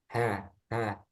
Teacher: Ha dia dibaca tipis ha jadi bukan He